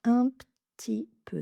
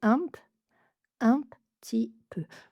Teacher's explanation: Le p est très léger, il est presque inexistant. On ferme les lèvres comme pour le prononcer mais il se transforme très rapidement en t.